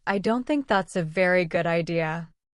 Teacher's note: falling intonation like a statement.